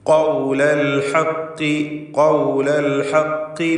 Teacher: ഖൗല എന്ന് പറയുമ്പോൾ പൂർണ്ണമായ തഫ്ഖീമാണ്. അൽ ഹഖ് എന്ന് പറയുമ്പോൾ നിസ്ബിയായ അപേക്ഷികമായ കുറഞ്ഞ തഫ്ഖീം മാത്രമാണ് ഖാഫിനുള്ളത് കസ്റായതുകൊണ്ട്.